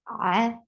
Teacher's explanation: ain from your throat, the sound is short, and for fatha, you're opening your jaws.